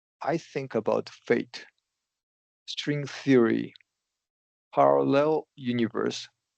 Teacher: each time there's a comma, you're going up in pitch